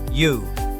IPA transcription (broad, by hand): ju